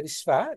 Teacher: తర్వాత విశ్వాలో తాళవ్య శకారం, అంటే కొంచెం మైల్డ్ గా ప్రొనౌన్స్ చేయాలి